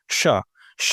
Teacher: श जब आप बोलेंगे तो ऐसा लग रहा है ना कि वायु जो है हवा जो है वो क्या हो रही है? थोड़ी सी उसमें रगड़ आ रही है तो ऊष्मा पैदा हो रही है। · जो हमारी ध्वनि निकल रही है ना उसमें हल्का सा घर्षण पैदा होता है। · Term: ऊष्म व्यंजन